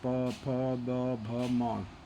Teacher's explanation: आपका देखना कि ये प दोनों ओठ सट जाता है, प, फ, ब, भ, म, पांचों वर्णों में आपके ओठ से, तो ये सब पांचों वर्णों का उच्चारण ओठ से होता है।